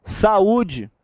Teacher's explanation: é quando eu tenho duas vogais em sílabas diferentes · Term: hiato